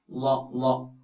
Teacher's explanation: ലോ ലോ, കടിച്ചു പിടിച്ചാലും കുഴപ്പമില്ല. ലോ എന്ന് പറയുമ്പോൾ നാവിന്റെ ഒരു വശം, ഈ വശമായാലും ഈ വശമായാലും കുഴപ്പമില്ല, അണപ്പല്ലുകളോട് ചേർത്ത് വെച്ചുകൊണ്ട് പറയാം. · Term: ലോദ്